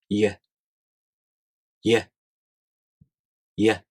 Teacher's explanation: The [j] sound is a voiced consonant meaning your vocal cords here vibrate.